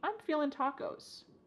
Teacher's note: I'm feeling, cutting off that G, I'm feeling tacos.